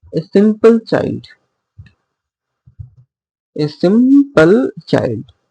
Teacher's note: As the first one is unstressed and the next one is stressed, so it is an iamb.